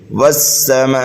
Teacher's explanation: میم کے بعد میں الف مدہ ہے اور الف مدہ کے بعد حمزہ اسی کلمے میں آنے کی وجہ سے یہاں پر جو ہے مد متصل ہوگا، یعنی میم کو 2.5 الف کے برابر کھینچ کر ہمیں پڑھنا ہے۔ والسماء، واو اور سین کے بعد میں الف لام آ رہا ہے، یہاں پر جو قاعدہ ہے وہ حروف شمسی کا قاعدہ ہے۔